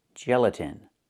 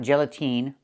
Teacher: The last syllable, the last vowel is not the long e like green beans. It's a short I like this is. It's more open. Not e but I gelatin.